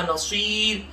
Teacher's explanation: नसीर की साद को मोटा भी पढ़ लेंगे और आखिर में रा को बारीक पढ़ लेंगे